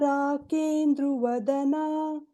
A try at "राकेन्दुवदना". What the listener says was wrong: So it is Rakendu Vadana. There is no Rakendru Vadana.